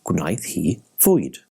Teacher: With bwyd, the b softly mutates to v, so it's gwnaeth hi fwyd. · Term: soft mutation